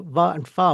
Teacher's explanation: I'm letting the air kind of slide through between my teeth and lip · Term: fricatives